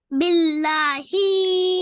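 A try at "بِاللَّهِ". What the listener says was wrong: اوہو ہی کو نہیں کھینچنا، لا کو کھینچنا ہے بیٹا۔ ہا کسرہ ہی ہوتا ہے تو آپ ہی کیوں کہہ رہے ہو یہ بتاؤ؟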